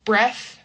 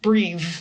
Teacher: Breathe which is the action is voiced.